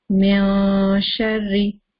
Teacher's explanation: after noon sakin there is a sheen. So we're going to hide the sound of noon sakina. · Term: Ikhfa